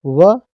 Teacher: व दांत और ओंठ दोनों को मिला करके इसकी ध्वनि आती है, तो इसको दंतोष्ठ से मानेंगे।